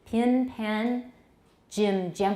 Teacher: In many accents, pin, pen, jim, gem are not distinguished, especially in the U.S. South.